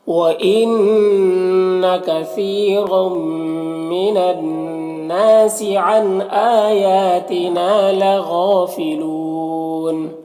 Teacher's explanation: یہاں پر واو مدہ ہے اور اس کے بعد نون کے اوپر زبر ہے، یہاں پر وقف کریں گے تو نون کا زبر سکون سے بدل جائے گا، تو پھر یہاں پر مد عارض وقفی ہوگا۔